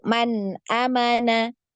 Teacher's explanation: hanya cukup dialirkan saja ya untuk huruf nun karena ketika sukun Huruf Nun ini ya ada aliran suara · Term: izhar halqi